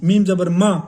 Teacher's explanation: ناک میں آواز نہیں لے کے جانی